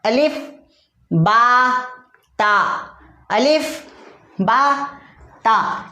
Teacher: तीसरा हुर्फ ता, जुबान का सिरा ऊपर के सामने वाले दांतों की जड़ से ता अदा होता है